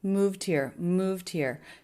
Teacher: the e d ending is a D sound because the sound before was voiced in this case the V